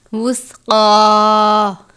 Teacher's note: موٹے والا کاف ہے، اس کے اوپر کھڑی زبر ہے، ایک الف کی جتنی اس کی مقدار ہے